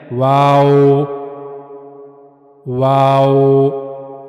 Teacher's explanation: वाव को अदा करने के लिए दोनों होठों को मुकम्मल मिलाए बगैर गोल घुमाना यानी दोनों होठों को गोल किया जाएगा। लेकिन उनको एक साथ मिलाना नहीं है। · واو کو ادا کرنے کے لیے دونوں ہونٹوں کو مکمل ملائے بغیر گول گھمانا، یعنی دونوں ہونٹوں کو گول کیا جائے گا لیکن ان کو ایک ساتھ ملانا نہیں ہے، دونوں ہونٹوں کو آپ نے ایک ساتھ ملانا نہیں ہے۔ واو، واو، دونوں ہونٹوں کو گول کیا جائے گا لیکن ان کو ملایا نہیں جائے گا ایک دوسرے کے ساتھ